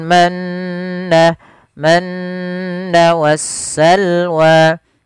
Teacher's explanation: Gunnah terjadi apabila adanya nun berharokat tasydid atau mim berharokat tasydid, maka ini harus dibaca dengan bacaan gunnah, yaitu memasukkan suara nun atau mimnya ke rongga hidung kita. Maka alaikumul manna, manna wassalwa, sambil ditahan 2 harokat.